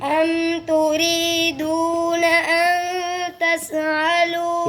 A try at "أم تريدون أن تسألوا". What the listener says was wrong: ये तस कलकला कर दिया आपने।